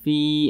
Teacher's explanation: huruf Fa ini dibaca panjang Karena Dia memiliki tanda baca kasrah dan posisinya itu tepat berada di belakang huruf Ya Sukun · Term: Mad thi'i